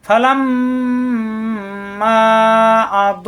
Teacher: দ জিব্বার গোড়ার কিনারা উপরের মাড়ি দাঁতের গোড়ায় লাগবে